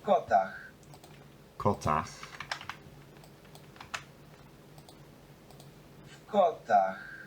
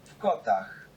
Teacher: It's interesting that the word in v seems to devoice in this one.